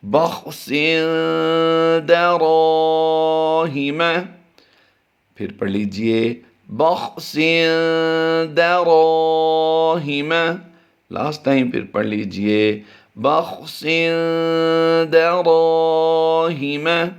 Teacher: دو زیر کی تنوین کے بعد حروف اخفاء میں سے دال آ گئی ہے، اس لیے اس کو ہم غنہ کر کے پڑھیں گے۔ اس غنہ کو غنہ زمانی کہتے ہیں، اور را الف زبر را آگے جو ہے اس کو ہم الف مدہ کرتے ہوئے لمبا کر دیں گے، اور باقی کسی لفظ کو لمبا نہیں کرنا۔